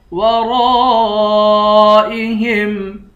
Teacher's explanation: واللہ من ورائہم، میم کو واو کے ساتھ ملا کر غنہ کر کے پڑھیں گے۔ ورائہم، را کے بعد الف ہے، الف حروف مدہ ہے، الف پر مد بھی ہے، اس مد کو 5 الف کی مقدار کھینچ کر پڑھیں گے۔ ورائہم، ہا کو میم کے ساتھ ملا کر میم پر غنہ کریں گے، اس ہا کو یا کے ساتھ ملا کر یا کو ایک الف کی مقدار کھینچ کر پڑھیں گے.